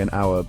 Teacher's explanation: we say an hour because the H is silent and the word starts with a vowel sound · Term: H can be silent